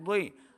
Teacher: ضاد کو موٹا پڑھنا ہے، ضاد حرف مستعلیہ سے ہے